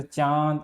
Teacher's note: वायु का कुछ अंश नाक से निकलने के कारण स्वर में अनुनासिकता आ जाती है